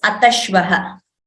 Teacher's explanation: Visarga combines with the Shakara and we chant it as Atashvah Karaniyani. Ataha Shvaha becomes Atashvaha.